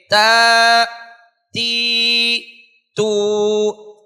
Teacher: تا ادا کرنے کے لیے ہم زبان کی نوک کو ثنایا علیہ یعنی سامنے والے دو بڑے دانتوں کی جڑوں میں لگانے کے بعد ادا کریں گے